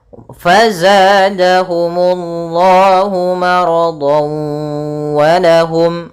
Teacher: masukkan tanwin di huruf dhan ke huruf waw sambil ditahan suara wawnya. Maradan wa sambil masih menyisihkan suara gunnahnya karena di sini idghamnya idgham naqis. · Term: idgham bi gunnah